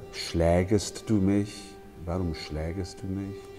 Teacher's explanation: the A umlaut that often provides problems. Has to be quite open.